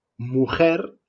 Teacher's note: pronunciado más en la parte de atrás de la boca así mujer justo antes de pronunciarse como hoy se pronunciaría mujer